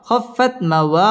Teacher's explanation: ওয়াও ঠোঁট গোল করে উচ্চারণ করতে হবে